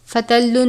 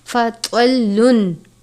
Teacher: त्वा को पुर पढ़ते हैं, त्वा हरुफ़ मुस्तालिया में से है, ता की तरह नहीं पढ़ना, फ़तल्लुन नहीं पढ़ना बल्कि फ़तवल्लुन, त्वा को पुर पढ़ेंगे।